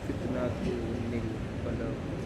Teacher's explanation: वो जो नून साकिन है जिसकी आवाज़ आ रही है, उसी नून साकिन को एक जेर दे करके पढ़ने का नाम, उसी को नूने कुतनी कहा गया